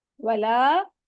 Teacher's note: यहाँ पर वाह करते हुए आपने होंठों को गोल रखना है। यहाँ पर 4 काउंट मद होगी, मद के फौरन बाद हमजा आ रहा है तो हम इसको 4 काउंट स्ट्रेच करेंगे।